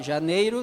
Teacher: som da semivogal Janeiro o e e o i ó Janeiro tu tira o sonzinho do i o som semivocal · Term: supressão, som semivocálico